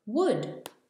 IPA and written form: wʊd (wood)